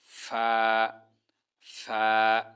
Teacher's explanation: নিচের ঠোটের পেট উপরের দাঁতের আগা মাঝখান থেকে হালকা বাতাস বের হবে